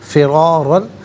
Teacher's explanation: را پر زبر ہے اور اگلے را پر دو زبر کی تنوین ہے، دونوں مقامات میں را کو پر کر کے پڑھیں گے